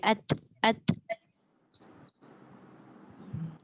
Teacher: Hujung lidah belakang gigi.